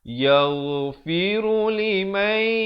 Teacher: Di sini dibacakan dengan dengung dua harakat. Nun mati bertemu ya, idgham bi gunnah.